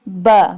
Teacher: Ba pronounced from the wet part of both lips.